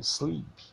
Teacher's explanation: Pode até parecer que exista aí um I antes desse S aí, mas não existe não, é sleep. Tá?